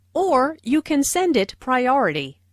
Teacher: Notice the stress on “or,” which emphasizes that there is another possibility.